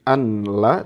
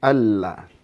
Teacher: Hukum bacaannya adalah idgham bila gunnah. Jadi bukan an la tapi alla. Langsung masuk ke lam. Nunnya hilang.